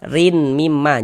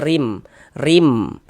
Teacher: Bunyi tanwinnya ini masuk ke huruf mim. Jangan dibaca toirin, rin mimma, jangan, tapi dibaca rim. Ini dibaca rim, masuk melebur ke huruf mim. Kemudian kita gunnahkan. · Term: idgham bi gunnah